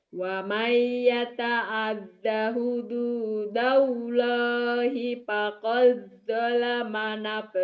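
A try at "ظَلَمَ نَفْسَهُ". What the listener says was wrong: Bukan do, ini zo. Zolama. ZHO. Bukan dolam. Zo. Kalau do, so titik ini to titik. Zolama nafsah.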